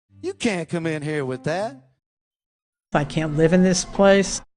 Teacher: Listen for how these speakers don't release the 't'